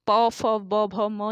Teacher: और आपके प वर्ग की अगर हम बात करते हैं तो प वर्ग में प, फ, ब, भ, म ये प वर्ग के व्यंजन है और इनका उच्चारण होता है ओष्ठ से। ओष्ठ व्यंजन होंगे आपके प वर्ग के सभी व्यंजन।